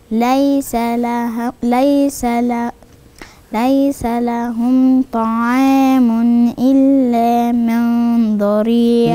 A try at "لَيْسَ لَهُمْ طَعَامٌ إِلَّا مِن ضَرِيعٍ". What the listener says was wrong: لازم غنة الإخفاء بتاعة النون، النون هنا وراها الضاد، هيبقى في عندي إخفاء. ولازم النون دي شكل بقي هياخد شكل الضاد، والضاد حرف فخم، يبقى شكل غنة الإخفاء هتتشكل بالضاد.